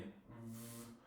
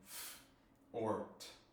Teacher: voice is whether your vocal cords vibrate, like in v, or not like in f or t.